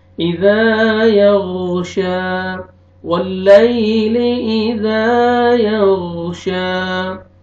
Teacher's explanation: یغشا، غین کو اپنے صحیح مخرج سے ادا کریں گے۔ شین کو آپ نے کھینچنا ہے ایک الف کے برابر